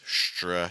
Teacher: when you do this stra, you can even see my lips kind of slight rounding, and the sound feels a lot more concentrated